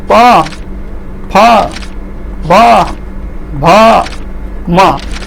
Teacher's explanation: इसकी डिफिनेसन तल र माथिका दुवै ओठहरू जोडिएर उच्चारण हुने वर्ण भएकाले यसलाई ओष्ठ्य वर्ण भनिन्छ। अर्थात नीचे और ऊपर की होंठ जो एक आपस में जुड़कर इसका उच्चारण होता है